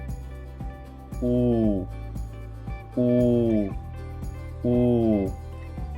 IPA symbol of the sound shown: u